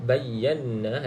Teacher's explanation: Bayyana, hati-hati sebab bertemu 2 huruf sabdu yang berturutan. Nun yang bersabdu, ya, wajibul gunnah, baca dengan 2 harakat. Kemudian nun kosong selepasnya bukan lam ataupun ra, selepasnya bukan lam ataupun ra, maka baca dengan 2 harakat.